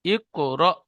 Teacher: সাকিন যুক্ত হামজাকে একটু ঝাটকা বা ধাক্কা দিয়ে পড়বো।